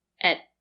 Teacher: At is usually not stressed, so the sound is more closed. At. We don't say at, we say at.